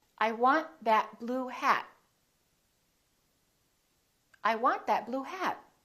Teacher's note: you need to hold the t at the end to have a more American accent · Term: hold that final T